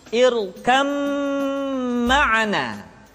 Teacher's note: Dibaca tidak irkam ma'ana tetapi irkam ma'ana. Disertai dengan gunnah, ditahan, tidak boleh tergesa-gesa.